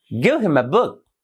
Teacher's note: pattern here is stressed unstressed unstressed and stressed